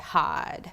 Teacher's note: a sound like I is sometimes pronounced like ah. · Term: Southern Belle Shift